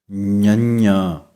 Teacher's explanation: ਤਾਲੂ ਅਤੇ ਨੱਕ ਤੋਂ ਆਵਾਜ਼ ਇਹ ਪੈਦਾ ਹੁੰਦੀ ਹੈ। ਜਿਵੇਂ ੰਗਾ ਅੱਖਰ ਗਲੇ ਅਤੇ ਨੱਕ ਦੇ ਵਿੱਚੋਂ ਪੈਦਾ ਹੁੰਦਾ ਹੈ, ਹੁਣ ਗਲੇ ਦੀ ਵਰਤੋਂ ਨਹੀਂ ਹੋਵੇਗੀ, ਜੀਭ ਤਾਲੂ ਨਾਲ ਲੱਗੇਗੀ ਅਤੇ ਨੱਕ ਦੇ ਰਾਹੀਂ ਆਵਾਜ਼ ਆਵੇਗੀ ਨਾਲ ਹੀ, ඤ।